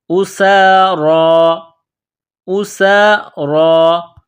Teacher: را کے اوپر کڑا زبر ہے، ایک الف کے لمٹ میں کھینچنا ہے